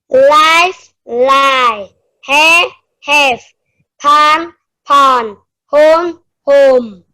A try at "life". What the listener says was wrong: So for these two, life. So I need to hear the f at the end. So make sure at the end of the word, the f or the v, that I hear that sound.